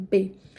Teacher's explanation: Quando a gente pronuncia B, a gente encosta, né, os lábios inferior e superior um ao outro. Então, a gente tem essa obstrução da passagem do A.